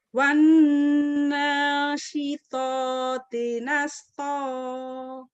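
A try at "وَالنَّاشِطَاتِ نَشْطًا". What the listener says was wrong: Hutang sinnya masih tetap Ibu. Wan nasyitoti nashto. Coba Bu, sinnya Bu latih. Iya, masih kurang ya shinnya ya. Pelan-pelan bacanya. Sambil bercermin, samakan mulutnya dengan saya. Samakan gitu. Nashto. Ibu masih nasto. Ibu bibinya masih nasto.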